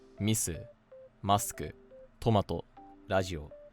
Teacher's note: Another one is that foreign loan words tend to be Atamadaka a lot of the time, and especially two or three mora loan words are almost always atama daka